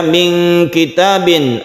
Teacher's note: Min kitabin ada ikhfa, nun bertemu dengan kaf